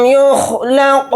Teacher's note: لام کو قاف ساکن کے ساتھ ملا کر پڑھیں گے، اور یہاں پر قاف کو موٹا پڑھیں گے اور قاف کے اندر قلقلہ کر کے پڑھیں گے